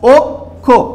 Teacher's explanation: ক্ষীয় শব্দের প্রথমে থাকলে খ দিয়ে উচ্চারিত হবে, কিন্তু ক্ষীয় যদি শব্দের মাঝে বা শেষে থাকে তাহলে ক্ষীয়ের পরিবর্তে ক এবং খ বসবে, এটি গত ক্লাসে আলোচিত বিষয়। তাহলে আদ্য অয়ের পরে ক্ষীয় থাকলে আদ্য অয়ের উচ্চারণ আর অয়ের মতো থাকে না, ও এর মতো হয়ে যায়।